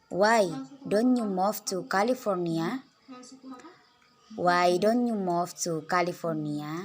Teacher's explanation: intonasi menurun kemudian naik